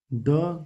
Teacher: ड का उच्चारण स्थान है मुर्धन्य। जो कि ट वर्ग है, ड वर्ग है।